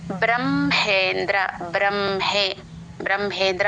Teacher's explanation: హ కింద మ వత్తు వచ్చినప్పుడు మ ముందు హ తర్వాత వినిపించేలాగా పలుకుతాము